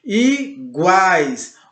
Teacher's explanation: Olha como o A ele sai mais forte, ele sai mais potente, mais presente.